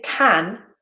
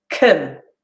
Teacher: I don't say can, I use our friend, the schwa, and I use a weak form, can, right?